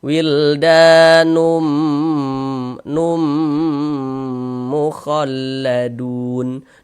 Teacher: Kemudian dighunahkan. Jadi bagian numnya itu suaranya itu kita tahan, kita panjangkan sejenak sepanjang dua harakat. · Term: idgham big ghunah, idgham bi gunnah